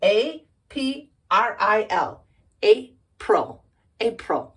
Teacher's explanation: Why is it ol and not ill? Because of the emphasis is on the first vowel sound